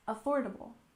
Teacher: we stress the second syllable in affordable